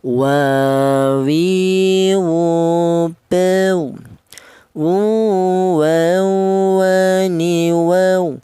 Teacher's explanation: Huruf wawu keluarnya huruf berasal dari kedua bibir yang renggang